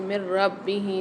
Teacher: نون ساکن کے بعد را مشدد آ رہی ہے، تو یہاں پر ہم ادغام مع غنہ کریں گے، یعنی غنے کے ساتھ ادغام کر کے پڑھیں گے۔